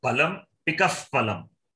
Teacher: So this is upadmaniyam. The ardha visarga is upadmaniya. Ucharana sthanam is oshtau, lips.